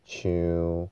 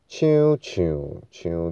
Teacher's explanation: 台语第七声，它是台语特别的声，要中平声在中间